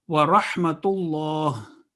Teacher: lam is lam jalala, it's Allah, and it would be a thick sound.